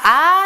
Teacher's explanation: 단모음은 우리가 아 했을 때 처음부터 끝까지 아 라고 발음되는 거 느낄 거예요